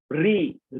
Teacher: রি যখন উচ্চারণ করছি আমাদের জিভ গিয়ে মূর্ধাতে লাগছে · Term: মূর্ধন্য ধ্বনি